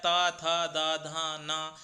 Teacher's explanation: आपकी जीभ प्रायः दांतों को स्पर्श करती है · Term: दंत उच्चारण स्थान